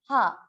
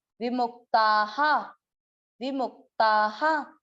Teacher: अब मुंह के बाद आधा क है तो मुख, विमुख, ता के बाद विसर्ग, विसर्ग का उच्चारण इसकी मात्रा पे, आ की मात्रा है तो विसर्ग को पढ़ा हा